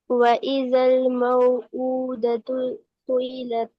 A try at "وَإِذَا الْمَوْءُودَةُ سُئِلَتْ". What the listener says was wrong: नहीं सुई नहीं करे ना, सू के बाद हमजा को अलग से पढ़े। सुइलत